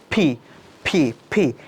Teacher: এটাকে বলা হয় অ্যাসপাইরেটেড সাউন্ড, অর্থাৎ একটা এক্সট্রা ফোর্স দিয়ে উপরের দাঁত নিচের ঠোঁট এবং আপনার মুখগহ্বর থেকে একটা বাতাস বের হবে